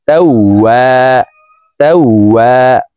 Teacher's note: ওয়াও হরফকে দুই ঠোঁট গোল করে দুই ঠোঁটের মাঝে ফাঁকা রেখে উচ্চারণ করে পড়ব। তারপরে এখানে দেখুন জবরের বাম পাশে খালি আলিফ আছে, এই কারণে এই ওয়াওকে এক আলিফ টেনে পড়তে হবে।